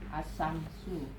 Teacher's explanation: Maka lam mati tersebut dibaca idgam atau artinya lebur dimasukkan ke dalam huruf yang ada di hadapannya. Sebagaimana idgham lam mati dilafazkan asamsu. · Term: idgam samsi